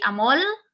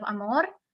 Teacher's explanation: You can say amol instead of amor, and things like that. When the R is not as vibrant, you can actually change it for an L.